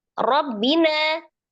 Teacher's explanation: Rabbina ro-nya fathah dibaca tebal. Rabbina tasdid banyak double ya, ba sukun dan ba kasroh.